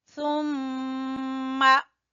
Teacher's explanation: मीम मुशद्दद का गुन्ना करेंगे